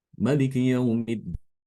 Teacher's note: Imam Ibnu Katsir membaca mim pada kata Maliki dibaca dengan qasr atau pendek. Jadi alifnya dibuang.